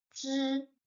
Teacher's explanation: also with zhi, the e is mute, is not voiced. You don't pronounce it.